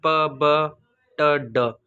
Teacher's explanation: The plosive sounds produced by completely stopping airflow and then releasing it.